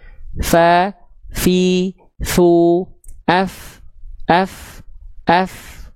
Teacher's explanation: Nah, kalau tepat melafalkannya seperti itu, seperti ini, maka dia akan mengalirkan nafas yang berbisik, nafas yang jelas, nafas yang mengalir · Jadi ujung gigi seri atas kita disentuhkan ke bibir bawah bagian dalam yang basahnya. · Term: huruf fa, makhraj huruf fa